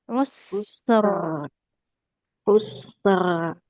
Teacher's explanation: Nah, ada getarnya kemudian harus tebal.